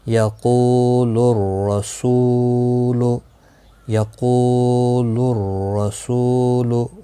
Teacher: یہاں پر حروف شمسی کا را آیا ہے، اس لیے ال نہیں پڑھا گیا